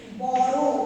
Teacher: যেমন ধরো দুই অক্ষরের একটা বিশেষণ পদ ধরো বড়, এটাকে আমরা কিভাবে উচ্চারণ করি বড়, তাই তো র অ ছিল সেটা ওয়ে পরিণত হয়ে উচ্চারিত হয়